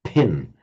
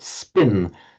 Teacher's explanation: If you say the word pin, you can hear a puff of breath, pin. If, however, you put an S in front of it and say spin, that's the correct one.